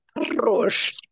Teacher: You have to roll like a little child who rolls the tongue to make sounds. You have to roll your tongue and say arroz. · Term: rolled